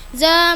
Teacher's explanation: Fatah bertemu alif panjang dua harakat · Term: madu thobi'i, madu tabi'i